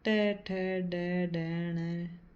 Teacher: इनका उच्चारण जीभ के अग्र भाग द्वारा मुर्दा तालु का बीच वाला ऊपर का कठोर भाग को स्पर्श करने से होता है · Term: मूर्धन्य व्यंजन